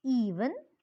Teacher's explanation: this vowel is described as a front close unrounded vowel